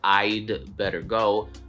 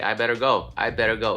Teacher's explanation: they kind of do it so fast that the apostrophe D sort of disappears and it's it's really hard to tell that it's there so instead of I'd better go people might just say I